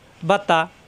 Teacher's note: বা জবর বা, তা জবর তা, বাতা, বা দুই ঠোঁট থেকে তা জিহ্বার আগা উপরে দাঁতের গোড়ায়